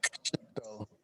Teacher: I think there's an ejective K too.